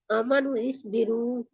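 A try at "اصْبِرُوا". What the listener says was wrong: आमनु स्बिरू। इकट्ठा करना है इसको।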